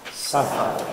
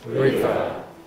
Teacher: you have to move the lip, the lower lip. Voiceless, suffer. Suffer. And voiced, river.